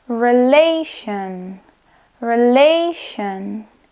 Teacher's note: tak sedlácky môžem povedať na sion t ial iti a i sa zdôrazňuje druhá slabika od konca slova